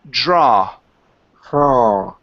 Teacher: end with an ah, not an oo